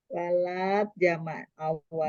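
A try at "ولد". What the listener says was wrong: Jangan panjang atuh. Walad gitu. Walad.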